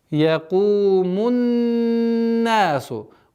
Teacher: Удержание назализации в размере 2 огласовок. После удержания долгота в размере 2 огласовок фатхи.